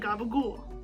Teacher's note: the p becomes a b that final vowel almost disappears entirely or is heavily reduced